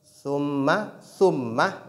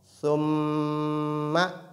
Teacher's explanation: Et au niveau du mim, on doit non seulement accentuer, mais aussi on doit nasaliser. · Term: nasalisation